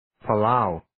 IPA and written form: 'pælaʊ (palau)